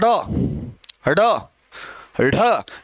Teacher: हम बोलेंगे ड ड ढ, ये 2 हैं, ड और ढ, ड ढ। इनमें आप अगर ध्यान से महसूस करोगे तो जीभ 2 बार स्पर्श कर रही है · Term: द्विगुण